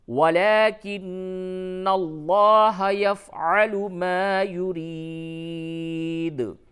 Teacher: نون کے اوپر تشدید ہے، غنہ بھی ہوگا، اور لفظ اللہ کے لام کو پڑ کر کے پڑھیں گے